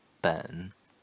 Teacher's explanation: The pronunciation third tone, the low tone, 本. So theoretically, the third tone goes down and then goes up, but that's only in the theoretical, in the theories.